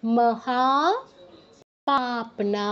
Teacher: ম ব্যতীত এ শব্দের প্রত্যেকটা অক্ষর দীর্ঘ